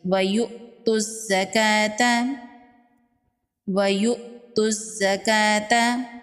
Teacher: صاد حروف مستعلیہ میں سے ہے، صاد کو پر پڑھیں گے، لام پر کھڑی زبر ہے ایک الف کے برابر کھینچ کے پڑھیں گے۔ یہاں پر حمزہ ساکن ہے، حمزہ ساکن کو جھٹکے سے پڑھیں گے،